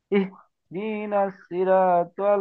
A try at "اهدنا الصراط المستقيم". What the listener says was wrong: তি টান হয়ে যাচ্ছে, দিতে টান নাই, হরকতে টান হবে না।